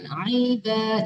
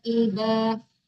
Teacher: Kalau ain itu kan makharijul hurufnya di tengah-tengah tenggorokan.